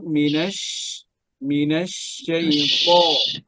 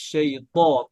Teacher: শিনটা যেন সুন্দরভাবে এটার আওয়াজটা যেন ছড়িয়ে যায়, এটাকে বলে তাফাস্সি